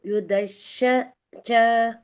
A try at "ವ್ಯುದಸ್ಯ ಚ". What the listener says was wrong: ಒಳ್ಳೆ ಪ್ರಯತ್ನ ಮಾತಜಿ ವ್ಯುದಸ್ಯಚ ಶಶ ಇಲ್ಲ ಅಲ್ಲಿ ವ್ಯುದಸ್ಯ ಇದೆ ವ್ಯುದಸ್ಯಚ